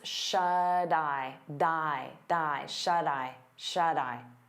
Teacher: we turn that T into a soft D because it's between vowels, and you'll hear it on both words.